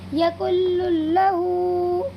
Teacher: یہاں پر بھی نون ساکن کے بعد یہ لام آیا ہوا ہے، اسی لیے اس نون ساکن کی آواز کو لام میں بدل دیں گے اور بغیر کسی غننے کے ادا کریں گے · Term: ادغام تام